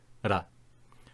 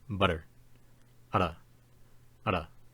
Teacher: The first, transcribed with the letter R, is more similar to the letter R in languages like Hindi or Japanese. It is pronounced as what is called a tap, as the tongue literally just taps on the roof of the mouth in order to produce it. Ra. If this seems difficult, in some English dialects, this sound is used in the word butter.